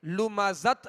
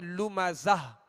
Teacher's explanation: تو اس کو ہائے ساکنہ سے بدل کر وقف کریں گے، لمزت نہیں پڑھیں گے بلکہ لمزہ